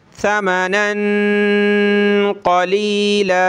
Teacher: मिन इंदिल्लाहि, इंदिल्लाहि, लियश्तरू, लाम ज़ेर ली, या शीन ज़बर यश, लियश, लियश्तरू बिही, बा ज़ेर बी, हा खड़ी ज़ेर ही, बिही समनन क़लीला, नून पे ये तनवीन कलरफुल है, नाक में आवाज़ पैदा करेंगे।